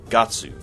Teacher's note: the closest thing to Guts would be Gatsu, though with less emphasis on the U sound